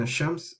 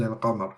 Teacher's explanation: the lam is being missed also in ash-shams, and the lam is being read in al-qamar